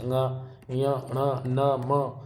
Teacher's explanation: जब इनको उच्चारण करेंगे तो नाक से हवा निकलती है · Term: नासिक व्यंजन